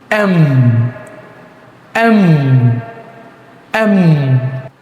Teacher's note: বাদ দিয়ে এখানে শুধু এড করতে দুই ঠুট লাগিয়ে ফেলা। অর্থাৎ আমরা যখন এম ফ্রন্সিয়েশনস করব তখন দুই ঠুট লাগিয়ে ফেলতে হবে।